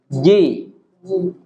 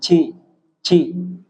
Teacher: Jim enggak boleh mendesis